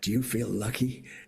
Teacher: that kind of breathy California voice